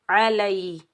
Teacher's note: لام کے اوپر زبر، آگے یا ساکن ہے، لام کو ہم یا ساکن کے ساتھ ملائیں گے، یہ یا لین ہے، اس کو نرمی اور جلدی سے ادا کریں گے